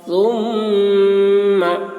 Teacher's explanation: मीम मुशद्दद है, मीम में गुन्ना होगा